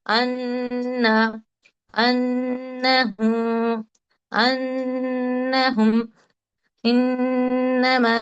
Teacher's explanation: यानी कि गुन्ना कैसा होता है कि 2 काउंट्स नाक में साउंड को होल्ड करना है, ठहराना है